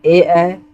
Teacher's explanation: ए ऐ जब हम लोग जब बोलते हैं तो ये कंठ और तालव्य दोनों जगह से इनकी आवाज आती है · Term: कंठ तालव्य